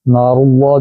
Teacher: لفظ اللہ کی لام موٹی ہوگی کیونکہ پیچھے پیش آ رہی ہے، زیر ہوتی تو باریک ہوتی